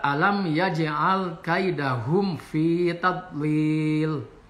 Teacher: Jadi alam ini idhar safawi, mimnya dibaca dengan jelas karena menghadapi huruf ya.